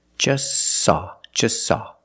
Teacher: is between consonants so don't pronounce it it's silent just saw you link the S with the S link them together · we see the t is between consonants so don't pronounce it it's silent just saw you link the S with the S link them